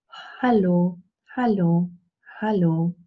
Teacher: we have a glottal fricative but it's very very soft